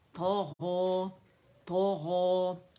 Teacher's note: तो मोटा thick letter है और ज़बान तालू से लिपट जाती है फतह के साथ